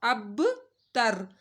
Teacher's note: با ساکن ہے تو با کے اوپر کلکلا ہوگا، اب تر، با دبو کے ساتھ پڑھا جائے گا، اب تر، ان شانیک هو الابتر۔